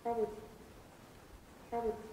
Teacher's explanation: probably has not been produced with three syllables as in its citation form but with only two